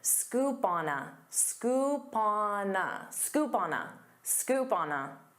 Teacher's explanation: Instead of saying scoop on a with pauses, you can pronounce this as one word.